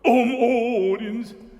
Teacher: It almost needs a glottal on it, but if that's possible on an oo vowel. Odins. But it's worth giving it that little bit of heft.